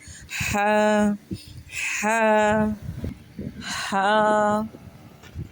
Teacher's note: ہا حلق کے بالکل سینٹر سے پروناؤنس کیا جائے گا۔ حلق کے درمیان والے حصے سے ہا ادا ہوتا ہے، جسے ہم ہوا باہر نکالتے ہیں ویسے ہی اس کو پڑھیں گے کر کے، جیسے ہماری آواز نکلتی ہے ایسے ہا ہا ہا۔